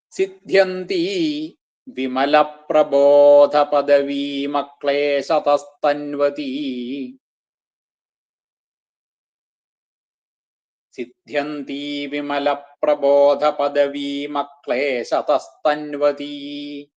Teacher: തന്വതി കൂടി വരുമ്പോഴ് ആ വിസർഗം സകാരായിട്ട് അക്ലേശതസ്തന്വതി എന്നാവും.